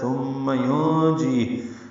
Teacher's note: نون ساکن کے بعد جیم آنے کی وجہ سے اخفا ہے، نون کی آواز چھپائی جائے گی